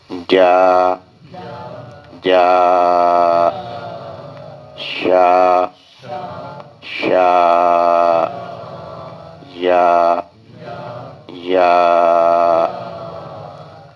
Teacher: اب یہ زبان کا درمیان کا حصہ اور سامنے والا تالو اور سے یہ تین حرف ادا ہوں گے